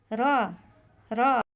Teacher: तीसरा हर्फ रा। रा हर्फ रा ज़बान का किनारा जड़ों से हल्का सा टकराता है जिससे एक हल्की सी लग्जिश पैदा होती है। देखिए ज़बान का किनारा जब सामने वाले दांतों की जड़ों से हल्का सा टकराता है तो रा अदा होता है।